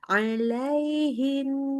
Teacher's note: nunnya tasdid dengungnya lebih panjang